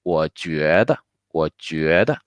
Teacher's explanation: The end of the third tone 我 is the beginning of 觉.